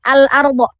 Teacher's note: Huruf lamnya tidak hilang, tapi dibaca dengan jelas. Al-arda. Arda ini adalah ro tafkhim ya, di mana huruf ro itu harus dibaca tebal. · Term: alif lam qamariyah